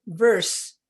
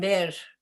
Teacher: The teeth close more sharply on the lower lip in English than in Spanish, which comes out much softer, all right?